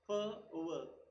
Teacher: passive articulator is the front upper teeth and the active articulator is the inner part of the lower lip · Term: labiodental